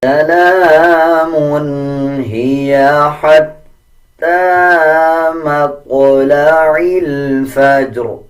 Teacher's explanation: لام کے اوپر کھڑا زبر ہے 1 سیکنڈ لمبا کیا جائے گا. تا کے اوپر کھڑا زبر ہے 1 سیکنڈ لمبا کریں گے.